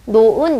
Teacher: 울림소리와 울림소리 사이에서 히읗은 기능을 잃어버려요